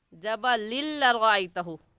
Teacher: तो हम यहाँ पर गुन्ना नहीं करेंगे बल्कि जल्दी से पढ़ जाएंगे जबलिल लरअयतहु। पहली बात जबलिन में के यहाँ पर गुन्ना नहीं होगा। दूसरी बात इसे जबलिन नहीं पढ़ेंगे बल्कि जबलिल लरअयतहु।